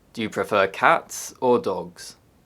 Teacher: In contrasting questions, the intonation rises, then falls.